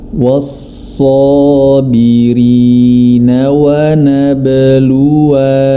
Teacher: Namun ketika waqaf dia dibaca panjang, Sebagaimana contoh, was-sabirina wa nabluwa, diwaqafkan, dibaca panjang dengan 2 harokat